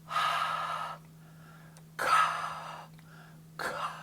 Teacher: my k um only happens when my tongue is going up and touching kind of the back of my throat and constricting or cutting off that airflow